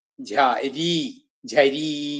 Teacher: ജ ജ അത് ചകാരത്തിന്റെ ഘോഷാക്ഷരമാണ് ചവർഗ്ഗത്തിലെ ഘോഷാക്ഷരം ആയിട്ടുള്ളതാണ്